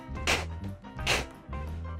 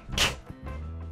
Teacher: Now, your tongue is shooting out. It's almost the same tongue movement that a G is, but there's way more breath and force underneath it